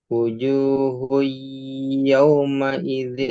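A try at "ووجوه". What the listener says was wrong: Wa. Yang bawahnya kan. Wa wujuh. Ada wanya.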